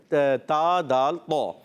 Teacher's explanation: نوک نہیں ہوتا، یہ سرا ہوتا ہے. سرائے زبان جب جو ہے سامنے والے ثنائے علیہ یعنی اوپر والے سامنے والے دانتوں کی جڑوں میں لگتے ہیں تو یہ ادا ہوتا ہے تا دال طا. ان کو کہتے ہیں حروف نطعیہ.